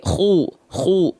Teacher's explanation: dibaca dengan tebal ya artinya pangkal lidahnya diangkat